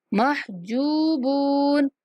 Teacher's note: جیم کے بعد واو مدہ ہے تو جیم کو بھی کھینچنا ہے اور با کے بعد واو مدہ ہے تو با کو بھی کھینچنا ہے